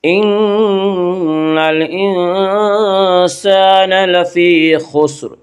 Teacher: ان نون مشدد غنہ ہوگا، غنہ کی ایک مقدار 1 الف ہے۔ ان الانسان، الف لام اگر حروف قمری کے شروع میں ہوں تو صرف لام پڑھا جائے گا، الف کو نہ پڑھیں گے۔